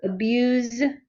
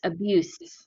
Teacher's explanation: a z is a voiced sound you have to use your vocal chords and the s is not voiced